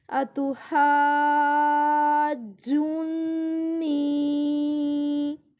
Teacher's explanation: پیش جون، نون یا زیر نی، اتحاجونی، اس طرح کر کے جیم کو لمبا کرنا ہے تھوڑا سا، پھر نون کے ساتھ سیدھا ملانا ہے کیونکہ تشدید آئی ہوئی ہے